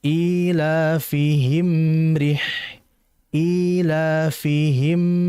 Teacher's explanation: Ketika bibir itu dirapat, karena mim itu kan makhrajnya di kedua bibir ya. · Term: izhar syafawi, idhar syafawi